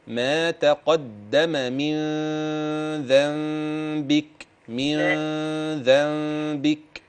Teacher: الاجمل لو نشبع الغنه شويه